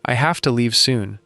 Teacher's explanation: Have to shifts into hafta.